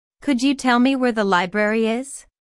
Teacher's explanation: notice that library is stressed here because it is the word with the important information